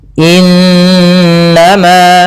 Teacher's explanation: Cara membacanya, suara n-nya ditahan 2 harokat. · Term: gunnah, bacaan gunah